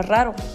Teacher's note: ello podría ser lo que sucede cuando pronunciamos la palabra raro se siente una vibración en la lengua y nos damos cuenta que la vibración de la primera sílaba es más fuerte que la segunda esto es porque la doble r es una consonante doble y